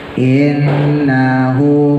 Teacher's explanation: hunya mad sila qasira 2 harokat